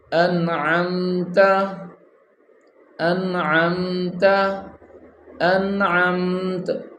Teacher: اب ان پہ غنہ نہیں ہوگا یہاں پہ. کیونکہ آگے حروف حلقی کا عین آ گیا، اور جب حروف حلقی آ جاتا ہے پھر غنہ نہیں کرتے.